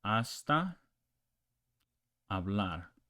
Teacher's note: In Spanish, okay, so you don't pronounce this as in hombre, you pronounce hombre, and you don't pronounce this H. It is silent. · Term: H is silent